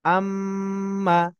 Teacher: আমার গুন্না এর পরিমাণ যেন এক আলিফ মদের পরিমাণ হয়, অর্থাৎ এক আলিফ পরিমাণ গুন্না যেন হয়